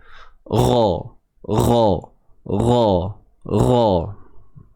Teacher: Huruf ghain pun tebal selamanya ni huruf ghain. Angkat pangkal lidah kita.